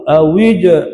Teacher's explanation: Qaqalah situ, jangan awij. Jangan bunyi angin. Mesti bunyi detak.